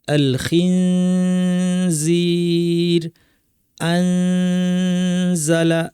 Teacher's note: নাক থেকে গুন্না করব। আলখিনজির আনজালা গুনাটাকে সামান্য একটু লম্বা করব